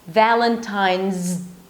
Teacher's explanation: you're actually pronouncing the Z and then you're blocking it with the D